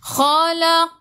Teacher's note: Khu biar ada angin, biar menggelegak.